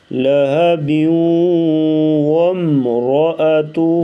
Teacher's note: حب پہ وقف کریں گے تو پھر ادھر ادغام نہیں ہوگا. اگر ملا کے پڑھیں گے با کو واو کے ساتھ آگے تو یہاں پر ادغام ہوگا